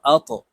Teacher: আল্লাযী হামজাহ ত জবর আত, ত কলকলার হরফ উপরের দিকে ধাবিত করে ধাক্কা দিয়ে উচ্চারণ করব